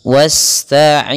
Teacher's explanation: Pada lafaz bacaan wasta'inu, sempurnakan aliran dalam bacaan sinnya, karena di sini sin cara membacanya adalah kita alirkan nafasnya wasta'inu, jangan jangan ditahan, karena dia huruf sin, huruf yang dia harus dikeluarkan nafasnya, atau kita kenal dengan sifatnya adalah sifat hamas dan sifat sofirnya berdesis. Wasta'inu, kemudian ain panjangkan 2 harakat, karena dia ada huruf mad yang datang setelah huruf kasrah, kita namakan dengan mad tabi'i.